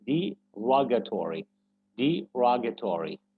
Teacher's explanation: So rogatory is the part that should be stressed because in the phonemic transcription, right after the word, we have this little stroke or very little I or something, this simple raised above the syllable that should be stressed.